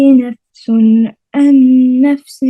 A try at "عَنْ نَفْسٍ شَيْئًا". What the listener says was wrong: आइन नहीं निकला, आइन क्लियर करें, आइन को क्लियर करें।